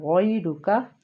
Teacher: جو غین ہے وہ حروف مستعلیہ ہے، اس کو ہم نے پر پڑھنا ہے